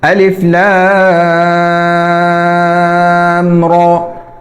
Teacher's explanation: اور را عربی میں جب اس پر زبر ہو، کھڑی زبر بھی زبر کی طرح ہی ہے، تو اس کو موٹا پڑھا جاتا ہے، تو یہاں پر را کو موٹا بھی پڑھنا ہے اور کھینچنا بھی نہیں